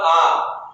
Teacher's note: देखिए ऐसे आ जो है बोलने में हमें दोगुना समय लगा। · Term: दीर्घ स्वर